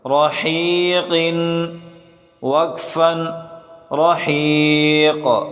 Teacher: اگلا حرف را زبر را، حا یا زیر حی، رحی، قاف دو زیر قن، رحیق۔ را کو موٹا کر کے پڑھیں، حا کو گلے سے نکالیں اور قاف کو موٹا کر کے پڑھیں